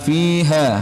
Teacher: Fi ini panjang mad tabi'i, ha mad tabi'i juga.